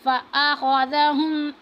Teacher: خوا کو موٹا کر کے پڑھیں گے اور ذال کو ہم نرمی کے ساتھ ادا کریں گے